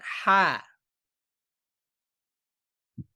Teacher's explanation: লিসানুল মিজমার বা আলাজেহবাটা কিনা পুরোপুরিভাবে লেগে নেই কিছুটা ফাঁকা রেখেছে এজন্য তো বাতাস বের হচ্ছে